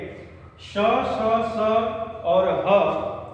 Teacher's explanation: इनके उच्चारण में थोड़ा संघर्ष होता है और जब भी संघर्ष होगा, घर्षण होगा